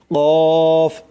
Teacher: 4 নম্বর মাখরাজ হচ্ছে জিহ্বার গোড়া তার বরাবর উপরে তালুর সঙ্গে লাগাইয়া উচ্চারিত হয় কফ, মোটা করে কফ।